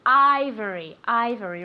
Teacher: Ivory with that V sound, okay? Moving your vocal cords.